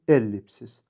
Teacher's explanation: Ellipsis sözündə vurğu birinci saytın üzərindədir.